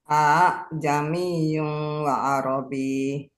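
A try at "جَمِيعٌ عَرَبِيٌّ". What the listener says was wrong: Jangan wa Arabi, bukan wa Arabi. Ada syiddatu Arabi.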